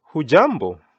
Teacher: the tone goes high so that I can know that you're actually greeting someone